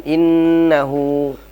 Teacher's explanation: ketemu lagi kita dengan nun yang bertasydid yang dihukumi dengan gunnah musyaddadah